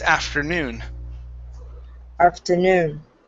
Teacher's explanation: Next is afternoon. Okay, stress on the end. Instead of afternoon, it's afternoon.